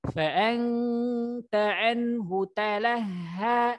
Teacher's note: ha itu ha besar ya, yang posisi makhrajnya tepat hurufnya di tenggorokan bagian bawah, tapi jangan terlalu talaha, tapi talaha, beda sedikit, tadi dipoles dia, dipoles sedikit.